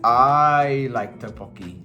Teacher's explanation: you don't stress the dish, you stress it on me because you're focusing on me